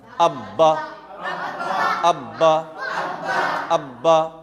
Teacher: तशदीद में डबल आवाज़ आती है, डबल पढ़ना पड़ता है